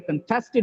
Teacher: contested is the verb, it gets the stress on the second syllable.